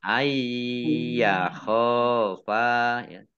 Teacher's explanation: Dibaca panjang boleh 5, boleh 2 harokat. Ayyakhofa nun sukun bertemu dengan huruf ya bacaan idhum bi gunnah masuk dengan mendengung